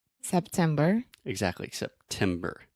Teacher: month of September exactly September so that is a true tea I'm really aspirating which means I'm breathing air out of my mouth